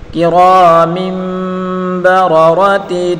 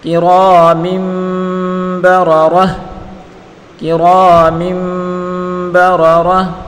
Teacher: تا گول پہ وقوف میں اس کو ہا ساکن سے بدل کر پڑھیں گے